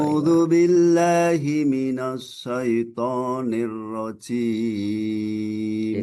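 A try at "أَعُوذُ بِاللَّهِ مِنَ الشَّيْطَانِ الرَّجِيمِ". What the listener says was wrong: Ditipiskan sedikit lagi huruf nunnya. Mina, bukan mino. Minasya. A'udzu billahi minasyaitonir rajim.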